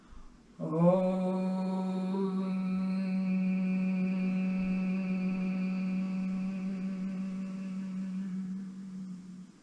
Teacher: made with a really nice wide o mouth then it slightly goes into an uh sound